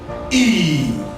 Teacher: it's a front vowel sound, which is produced with the front part of the tongue, raised to a height just below the closed position. while the lips are spread. That is, while pronouncing this sound, you spread your lips, as I've earlier said, under the short form. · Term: long vowel sound